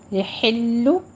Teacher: لا یحل ہا وسط حلق سے باریک نکلے گا. یحل آخر پہ ہونٹ گول کرتے ہیں، ضمہ ہے